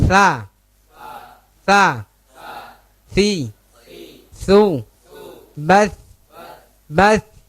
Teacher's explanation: Tha makhrajnya di mana? Tha. Tarful lisan ma'a athanaya al-ulya. Ujung lidah mengenai ujung gigi seri atas. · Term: huruf tha